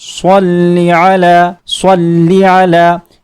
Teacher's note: صاد حروف مستعلیہ میں سے ہے، اسے ہمیشہ پر کرتے ہیں اور اس میں سیٹی کی آواز آتی ہے